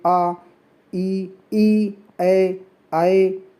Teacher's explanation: आपका ओष्ठ जो है वो फैल जाएगा, लेकिन वो गोल नहीं होगा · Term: प्रसृत